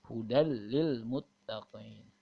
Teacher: Hilang, bunyi an-nya hilang, tapi masuk kepada huruf lam. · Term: idgham bila gunah